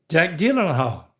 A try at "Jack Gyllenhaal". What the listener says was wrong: Yep, that's it. That's it.